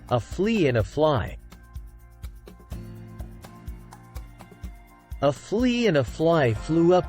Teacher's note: remember that f is voiceless pronounced without the voice by a strong push of air through pursed lips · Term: F sound